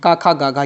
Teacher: का ख ग ये कंठ से होते हैं।